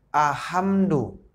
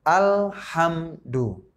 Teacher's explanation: Jangan dibaca ahamdu, tetapi alhamdu. Ya. Al-nya itu harus kita baca. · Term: izhar qamariyah